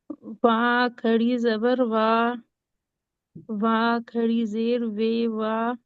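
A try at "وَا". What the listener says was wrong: नहीं नहीं, खींचना है खींचना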